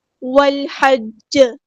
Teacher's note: جیم کو ہم ساکن کر دیں گے تو یہاں پہ قلقلہ ہوگا ، قلقلہ کبرا، یعنی کہ آپ نے اس میں شد کا · لام یہاں پر لام قمریہ، اس کو ہم ظاہر کریں گے · واو کو ہم نے لام کے ساتھ ملا دینا ہے، حمزۃ الوصل ہمارا ڈراپ ہو جائے گا ، لام یہاں پر لام قمریہ، اس کو ہم ظاہر کریں